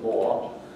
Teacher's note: I still use a slightly diphthongal variant in open syllables.